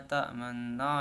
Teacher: Kemudian isyam itu cara membacanya mencampurkan dhammah dengan bacaan sukun disertai dengan gerakan mulut dimajukan seperti saat mengucapkan huruf U